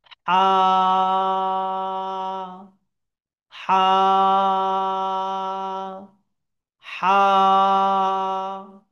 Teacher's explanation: একদম ভেতর থেকে নিচ থেকে আমার আওয়াজটা এই বড় হাইয়ের ক্ষেত্রে বেরিয়ে আসবে